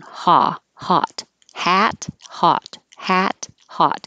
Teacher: that for air like hat the lips are back ah but for ah the lips are not pulled back they should be like straight up and down